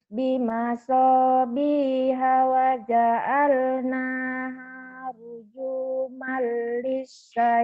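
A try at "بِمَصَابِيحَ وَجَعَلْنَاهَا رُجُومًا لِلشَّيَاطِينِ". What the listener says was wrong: Nah, boleh.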